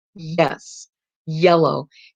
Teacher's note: palatal your tongue's bed touching the roof of your mouth